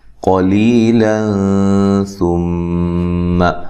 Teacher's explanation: قاف کو موٹا ادا کریں، لی یہ مدہ ہے